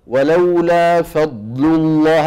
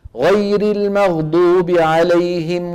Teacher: الضاد رخوة ولا شديدة؟ رخوة، لأن صوتها مستمر ما انقطع.